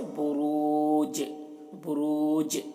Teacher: یہاں پر آیت ہے تو یہاں پر ٹھہریں گے تو جیم میں قلقلہ کریں گے۔ جیم کا جو زیر ہے یہ سکون سے بدل جائے گا تو جیم میں قلقلہ ہوگا